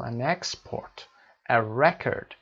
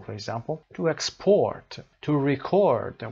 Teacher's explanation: The nouns are usually stressed on the first syllable, for example, an export, a record, and the verbs on the second syllable, for example, to export, to record.